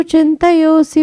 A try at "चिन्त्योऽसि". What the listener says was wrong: चिंत्योसी, वो चिंतयोसी नहीं है, वो आधाता है, चिंत्योसी भगवन् मया।